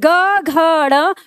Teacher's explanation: जब आप बोलते हैं ग घ ण तो कंपन आपकी उंगली पर पहुंच जाता है। कहने का मतलब है कि आपका कंपन बढ़ जाता है, तो कंपन जिसमें बढ़ा तो वही हमारा क्या है, सघोष है, और जिसमें कंपन अंदर ही था तो वो हमारा अघोष है।